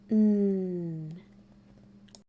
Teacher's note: n the n Sound is very similar to the m sound we make the n Sound by pushing air through our nose but our tongue is behind our top teeth our voice is on